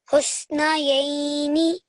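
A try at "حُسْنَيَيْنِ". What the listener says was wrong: Excellent, well done.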